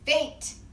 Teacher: it's just the tip of your tongue on your alveolar ridge